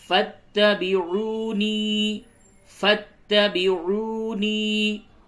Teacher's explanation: واو مدہ ہے اور یا مدہ ہے، دونوں کو کھینچیں گے